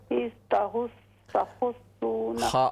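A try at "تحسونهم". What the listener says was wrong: खा को दुरुस्त करें। तहुस्सूनहुम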